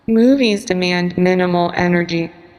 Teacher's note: if you stress the first word, it emphasizes movies and not something else.